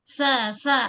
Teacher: Okey, bighafi huruf fa, perut bibir bawah. Okey, bahagian perut bibir menyentuh pada ujung gigi kacip bahagian atas